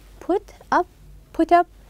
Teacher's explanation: we will link them as if they were one word then we are going to stress the second part